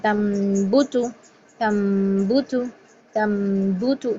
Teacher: نون کی ساؤنڈ نہیں ہے، میم کی ہے. تم غنہ بھی میم کا ہی ہے.